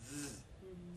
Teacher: The air, there's friction in your mouth. The air slides through. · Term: fricative